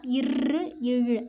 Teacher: இழு அப்படின்னு சொல்லும்போது மேல்வாய் இருக்குல்ல, அதை வந்து நம்ம நாக்கோட நுனி அப்படியே வருடும், வளைஞ்சு வருடும். அதான் இங்கே வளைந்துன்னு இல்லை, வருடும், அதை தான் சொல்கிறாங்க.